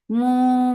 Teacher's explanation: This kunna is akmal, so keep the sound in your nose for a longer time. Mu for the circle lips, make it 2 counts long